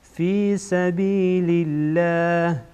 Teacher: لام جلاله باریک خوانده میشه